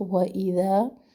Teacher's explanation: واو پر ہون گول ہوں گے، سنگل حرکت ہے، لمبا نہ کریں.